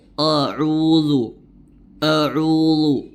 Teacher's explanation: dia menebalkan huruf hamzah pada lafaz audu jadi Dia membacanya dengan o o auudu auudu ya dia menebalkan